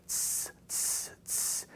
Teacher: And so basically what happened was what we call linguistically, it was regressive assimilation. The tau became a sigma, it just blended into the S sound because they both have the same point of articulation.